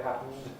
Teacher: syllabic N instead of N by assimilation